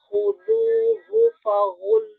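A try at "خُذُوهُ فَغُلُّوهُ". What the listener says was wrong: Ya, Umi semuanya jangan tebal. Ya, kho-nya tebal. Zal-nya tipis. Ha-nya tipis. Kemudian, fa tipis. Ghain tebal. Lam tipis. Ha tipis. Khudhu faghulluh. Oke, coba khu, kemudian irja ke huruf zal. Zu.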